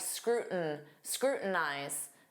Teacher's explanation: Native speakers will often drop that T and form a flap T and it will sound like scrutinize.